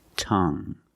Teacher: You have only the nasal sound. There's no g.